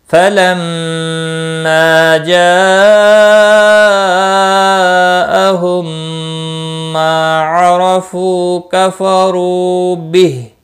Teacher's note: جاء مد متصل ہے، 4 الف کے برابر کھینچ کر پڑھیں گے۔ میم ساکن کے بعد دوسرا میم ہے، ادغام شفوی ہوگا، گنہ کے ساتھ پڑھیں گے۔ ما الف مدہ ہے، 1 الف کے برابر کھینچ کر پڑھیں گے۔